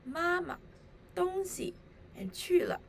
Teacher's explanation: the second syllables of the 3 respective phrases are short and soft. The second syllables have a neutral tone.